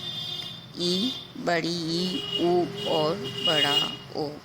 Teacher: मुख द्वार के संकुचित होने पर जो स्वर निकलते हैं उन्हें संवृत स्वर कहते हैं। 4 स्वर हमारे इस प्रकार के हैं: ई, बड़ी ई, ऊ और बड़ा ओ।